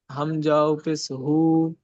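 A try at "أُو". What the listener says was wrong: হামজা ওয়াও পেশ হু হবে না, হামজা ওয়াও পেশ উ।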